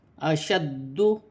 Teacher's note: من قریۃ، دو زیر کی تنوین میں غنہ نہیں ہوگا کیونکہ آگے ہا حروف حلقی میں سے ہے۔ اشد، دال مشدد ہے، جماؤ کے ساتھ ادا کیا جائے گا